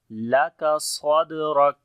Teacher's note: جب کاف کے اوپر رکیں گے تو شدت اور ہمس دونوں آ جائیں گی